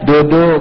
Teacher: Adapun D, huruf D, D kita D itu ujung lidahnya ujung sekali nempelnya di gusi. Kita ini mengucapkan huruf D nempelnya bukan di pangkal tapi di mana? Di gusi.